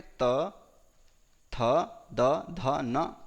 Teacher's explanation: तो लृकार, तवर्ग, तवर्ग में त, थ, द, ध, न, लकार और सकार का उच्चारण स्थान दंत होता है